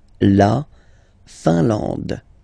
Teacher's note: I-N here, nasal, un. A-N, nasal, en. And then D, final E, not pronounced.